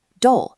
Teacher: For casual conversations with friends or family, you drop the polite particles completely. The sentence strips down to just the core word, do, delivered with a rising intonation.